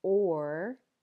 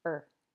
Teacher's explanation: The full form is or, and the weak form is just er.